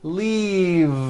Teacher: an unvoiced F the word is leave with a voiced V keep the voicing going throughout the whole word and voice the V leave like that if you stop the voicing at the end